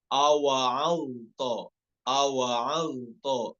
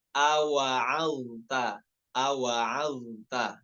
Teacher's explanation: ainnya dibaca tipis dan juga huruf taknya jangan sampai terbawa tebal, jangan sampai awa'alto, awa'alto, bukan, tapi awa'alta, awa'alta ya, karena sebelumnya ada huruf dha yang memiliki sifat isti'la ya, jangan sampai terbawa tebalnya.